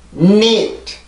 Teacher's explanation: 치조를 강하게 눌러주고 나서 공기가 여기로 나오는 게 입으로 나오는 게 아니라 코를 통해서 나와야 돼요. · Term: 비강음